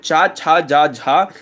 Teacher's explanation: स्पर्श संघर्षी, जिनकी वायु घर्षण के साथ उत्पन्न होती है, स्पर्श करती हुई मुखद्वार से निकलती है, और वो तालब्य हो जाएंगे।